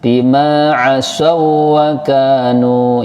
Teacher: untuk idgham mutamathilain tidak boleh kelamaan seperti idgham bigunah. Sebentar saja, seperti tasdid biasa.